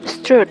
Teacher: For instance, SESP or Southern England Standard Pronunciation has the vowel a, like in the word strut. But many people with a Northern English accent use the vowel u, so it will be strut.